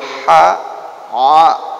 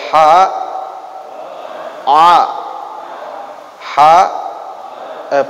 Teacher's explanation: Yang pertama adalah keluar huruf daripada pangkal tenggorokan. Pangkal itu yang paling dasar ya.